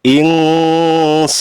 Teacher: Innal insana, nal alif lam qamariyah, insana, nun mati bertemu dengan huruf sin termasuk ikhfa, lamanya 2 harokat